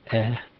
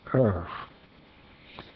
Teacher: Ver, now this is another R-modified vowel sound. It's not the short sound eh, it's er.